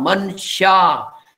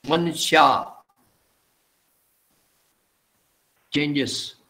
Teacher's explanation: the N has to be pronounced, Mansha, because the S turns to Sh